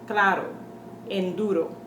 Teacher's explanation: the short roll, the one single R that comes in the middle of the words